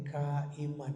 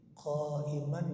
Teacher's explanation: beda jauh makhrajnya ka Kaf dengan makhrajnya q qof